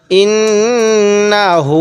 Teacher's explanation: নাকের বাঁশি দ্বারা গুণনা করব কারণ মিম এবং নুনের উপর তাজদিদ হলে সেখানে আমাদের গুন্না করতে হবে